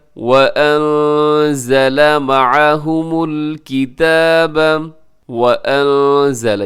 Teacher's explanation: یہاں نون ساکن ہے اور نون ساکن کے بعد زا ہے تو یہاں اخفا کیجیے گا۔